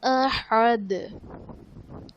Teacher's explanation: کفواً احد، واو پر دو زبر کی تنوین، اس کے بعد حروف حلقی میں سے حمزہ ہے تو یہاں پر اظہار کا قاعدہ ہوگا، یعنی غنہ نہیں کریں گے اور دال وقف کی صورت میں ساکن ہو جائے گا تو یہاں پر ہم قلقلہ خوب ظاہر کریں گے